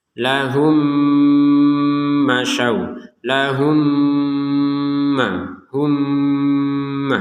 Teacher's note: kita masukkan mim yang pertama kepada mim yang kedua disertai dengan dengungan 100%